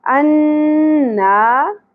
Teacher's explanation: الف حرف مدہ ہے، ایک الف کے برابر کھینچنا ہے